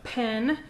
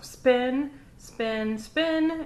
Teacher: pen versus unaspirated sounds where sounds are made without breath so spin it's still a p you stop it's still a p so you would expect it to be aspirated but it's not because of the s in front of it